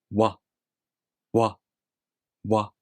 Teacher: The W sound is a voiced consonant, meaning your vocal cords here vibrate. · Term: W consonant sound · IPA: [ɰa]